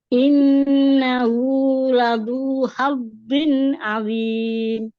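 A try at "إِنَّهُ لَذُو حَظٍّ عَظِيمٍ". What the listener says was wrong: Ini lebih baik, tapi masih ya antara tipis dan tebal. Jadi pangkal lidah tuh naik, cuman kayak tengah lidahnya nggak ikutan naik nih kayaknya. Jadi kurang tebal gitu.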